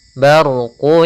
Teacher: barqu di sini ada huruf ro yang berharakat sukun sebelumnya fathah kita namakan dengan ro tafkhim ro yang tebal